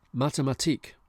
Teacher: Mathematik, stress on the last syllable.